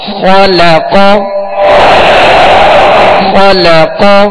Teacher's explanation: خا اور قاف یہ دونوں حروف پر پڑھیں گے، موٹا پڑھیں گے، اس لیے کہ یہ حروف مستعلیہ میں سے، اور لام کو باریک پڑھیں گے. · اب آگے پیچھے دونوں حروف یعنی پہلا اور تیسرا حرف جو ہے حروف مستعلیہ ہے، پر پڑھا جائے گا، تو کہیں ایسا نہ ہو کہ لام بھی پر ہو جائے، لام کو باریک پڑھ دیں